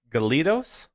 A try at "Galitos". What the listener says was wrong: Yeah, Galitos, but they like, in their language, it's like Galich. Galich, yeah, like Galich. Like their OS is like a ch. It's like ch.